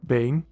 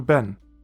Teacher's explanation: In the first example, you go from a long tsere to a short segol.